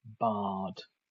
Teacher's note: a very open back vowel and again a long one is the a vowel as in Bard now the one vow